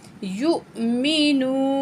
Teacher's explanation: جوڑ کرتے ہیں اس کا، یا پیش حمزہ یو، میم زیر می، یو می، نون پیش واو نو، واو پر جزم ہے، اس سے پہلے الفاظ پیش ہے، واو مد ہے، 1 پوائنٹ کھینچ کے پڑھیں گے